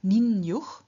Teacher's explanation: the e at the end of ni, has changed into its semi-vowel equivalent ye, and so we have ninjuch.